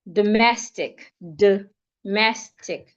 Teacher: The letter O changes to a schwa